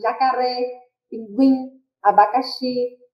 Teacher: Oxítona, quando a última sílaba ela é tônica, a última sílaba ela é a mais forte, como é o caso de jacaré, pinguim, abacaxi.